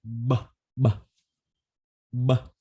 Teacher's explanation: B plus vibration tức là hai môi mím lại, bật hơi ra và rung họng. · Âm B thì hai môi này mím lại và bật hơi ra. B, b. Đồng thời rung họng các bạn nhé.